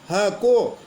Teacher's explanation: स्वयांत्रीय काकल्य का मतलब ह, ऐसा लगता है कंठ के नीचे यानी फेफड़ों के वहाँ से इसका उच्चारण हो रहा है, तो ह काकल्य व्यंजन है, मतलब है।